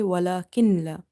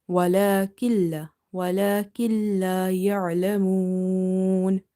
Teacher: So this noon we will drop because there is shadda. So we will directly join this kaf with lam.